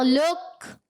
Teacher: مگر اب ڈائریکٹ پر کیا کریں گے, پہلے ہجے میں قاف بھی پڑھیں گے کاف بھی پڑھیں گے, رواں میں ڈائریکٹ ہم یہ سمجھ لیں قاف کاف میں بالکل مل گیا